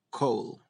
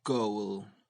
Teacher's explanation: I included these sounds here because they are softer in Spanish and we tend to mispronounce them. The velars k and g also differ in voicing. K, coal, g, goal.